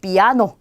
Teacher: 자, 이 두 개가 같이 왔는데 보니까 하나는 양모음, 하나는 강모음이에요. 그러면 아의 강세가 오겠죠.